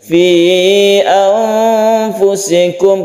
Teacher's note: Fi anfusikum kita bertemu ikhfa lagi karena ada nun mati bertemu dengan fa, ini kita sebut ikhfa. Ikhfa artinya samar, ketika kita membaca nun kita bersiap membaca fa.